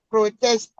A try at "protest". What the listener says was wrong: You stress the second one instead of the first one. You need to stress the first one, not the second one.